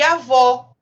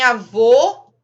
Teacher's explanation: na mudança do timbre da voz, como em avô e avó, em que o som aberto indica o gênero feminino e o gênero masculino no som fechado